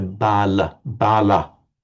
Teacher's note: the word for bala in northern Indian pronunciation, you hear bala with more of an ah sound